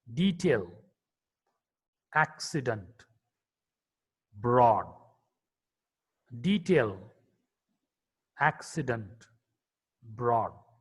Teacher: D is a voiced alveolar plosive consonant.